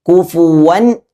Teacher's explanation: കുഫുവൻ ആ ഹംസ കൃത്യമായി വെളിവാകണം. ഇത് വെളിവാകാതെ പല ആളുകളും കുഫുവൻ അഹദ് എന്നോതി പോകുന്നത് കേൾക്കാം.